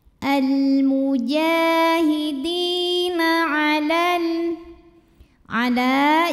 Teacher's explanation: Di mad tabi'i zahiri karena ada ya sukun yang sebelumnya berbaris kasrah, maka huruf dal panjangkan 2 harokat. Al-mujahidina ala, jika berhenti di la hukumnya adalah mad tabi'i karena ada alif didahului baris fathah.